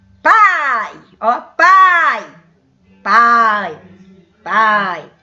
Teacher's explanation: oral quando o som é aberto sabe que o som sai toda pela boca